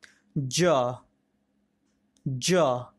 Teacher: जीभ तालु को स्पर्श करते हुए आती है